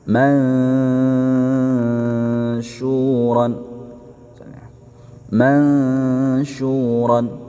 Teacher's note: nun sukun di ikhfa ya, disertai dengung dan siap-siap pengucapan shin.